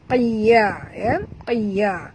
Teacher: huruf qaf tebal walaupun baris bawah kita kena baca tebal